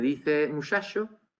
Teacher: un andaluz que dice muchacho, es decir, que está emitiendo la sh de Francia